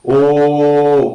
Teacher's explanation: Oh is back vowel sound, between half open and half closed, rounded lips, long sound